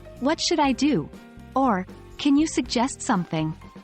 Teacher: questions asking for advice usually end with a rising intonation indicating that we're expecting a response